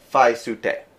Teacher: because of lenition, the T turns into an S